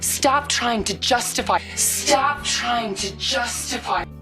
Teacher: the flap t is preceded by an n sound